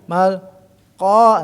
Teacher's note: memiliki sifat alistila jadi lidahnya terangkat ke atas sehingga untuk menutupi di atas